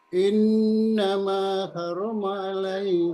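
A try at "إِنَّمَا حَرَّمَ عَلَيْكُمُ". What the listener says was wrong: Agak ditekan. Innama harrama.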